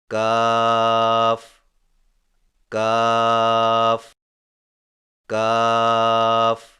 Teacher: کاف کی ادائیگی میں زبان کی جڑ کو کوے کے قریب تالو پر لگا کر باریک آواز میں پڑھیں